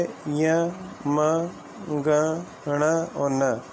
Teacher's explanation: ये प्रत्येक वर्ग के जो है पंचम वर्ण हैं। इन पंचम वर्णों का जो उच्चारण स्थान है वो नासिका माना गया है।